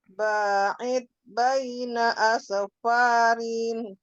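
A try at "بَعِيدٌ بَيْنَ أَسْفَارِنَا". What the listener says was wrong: Rina, dua harakat. Rina.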